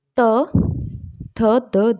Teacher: फिर दंत्य व्यंजन, दंत्य व्यंजन जिन व्यंजनों के उच्चारण में जीवा की नोक ऊपरी दांतों को स्पर्श करती है वो दंत्य व्यंजन कहलाते हैं